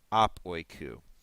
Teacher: the omicron will fall off, and you will end up with ap oikou. Instead of apa oikou, it's just simply ap oikou. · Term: elision